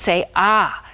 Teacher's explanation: ah is the vowel where your jaw is the lowest and your throat is the most open